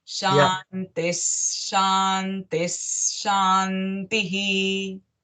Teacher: the visarga should come, and because it's followed by sh sound, the visarga sound becomes sh.